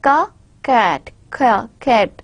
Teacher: In the velar, the sounds for which our tip of the tongue touches or the back of the tongue touches the velar, the last portion of our mouth, are known as the velar sound.